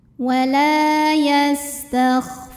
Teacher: doiri karena ada wau sukun yang didahului baris dah cara membacanya dipanjangkan dua harakat